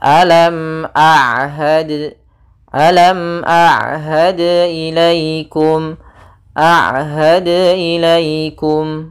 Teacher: ain di antara keduanya tidak terlalu ditahan dan tidak terlalu dialirkan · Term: sifat bainiyah